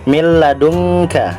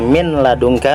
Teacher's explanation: huruf nun atau tanwin dimasukkan ke dalam huruf lam dan ro tetapi tidak mendengung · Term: idgham bila gunnah